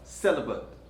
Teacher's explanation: There's a schwa here. It's not bait, it's but.